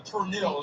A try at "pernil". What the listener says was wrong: Puppy, he said the R in Pernell. He said Pernell.